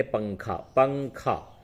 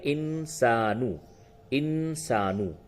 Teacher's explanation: ناک میں آواز کو لے جا کر کے تھوڑا گنگناتے ہیں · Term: اخفا